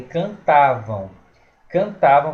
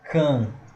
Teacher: é um ditongo nasal decrescente